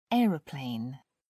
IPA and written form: ˈɛərəˌpleɪn (aeroplane)